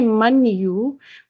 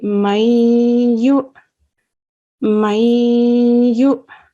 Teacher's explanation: The noon sakin is pronounced for 2 seconds, but only partially. So we don't say man yu, we say mayu.